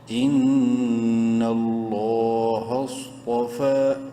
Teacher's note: صاد کو خوب منہ بھر کے پڑھنا ہے، تو کو بھی منہ بھر کے پڑھنا ہے